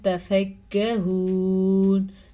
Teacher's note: تا نرمی سے اور شارٹ پڑھا جاتا ہے. ٹھیک ہے، یہ باریک یہ شارٹ زبر کی وجہ سے ہم نے پڑھا.